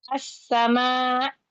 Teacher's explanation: Ada alif lam nih di sini. Di sini ada alif lam tapi bacanya bukan al lamnya tidak terbaca masuk kepada huruf yang kedua. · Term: idgham syamsi